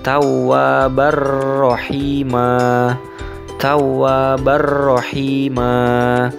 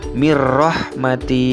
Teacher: Untuk contoh yang huruf ro adalah tawwabar rahima, sehingganya fathah tanwin yang terdapat pada ba alif itu digantikan oleh huruf ro setelahnya, dan cara bacanya tidak boleh berdengung karena memang idghamnya idgham yang bila gunnah dengan tanpa berdengung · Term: idgham bila gunnah